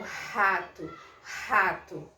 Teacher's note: eu posso produzir esse mesmo R de rato lá na minha glote, que a gente chama de R aspirado, que é o rato, rato.